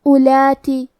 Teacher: ہمیں واو کو ظاہر نہیں کرنا ہے، حرف الالف کو پیش سے پڑھ کے حرف اللام کو پڑھیں گے